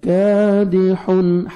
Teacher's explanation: کاف کو باریک پڑھنا ہے اور 1 سیکنڈ کاف کو کھینچنا ہے ، الف سے پہلے زبر ہے، کادحن، ہا پڑھیں گے، کادحن،